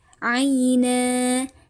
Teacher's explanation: Na dibaca panjang nunnya hukumnya mad'i wad.